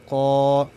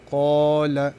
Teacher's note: الف ساکن نه مخکې قاف باندې زور راغلی دی، دې کې یو مقدار مد کېږي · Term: الف مده